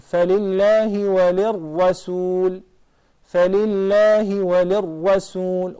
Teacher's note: The second lam is lam shamsiyya, because it's followed by the letter ra. So the lam will not be pronounced.